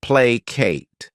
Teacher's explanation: this word has two syllables and the stress is on that first syllable